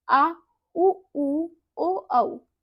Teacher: अब हम जानेंगे पच्च स्वर। पच्च स्वर क्या होते हैं, जिन स्वरों के उच्चारण में जीभ के पीछे का हिस्सा उठता है